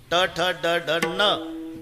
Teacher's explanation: बाणाचा न उच्चारा अजिबात दाताला लागत नाही टाळूला